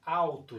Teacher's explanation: esse U aqui, ele é pronunciado de forma mais fraca, menos intensa, ele não é a sílaba tônica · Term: semivogal